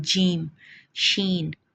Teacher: जिनकी अदायगी के वक्त ज़ुबान का फल सख्त तालु को छुए या करीब रहे, मसलन जीम, शीन।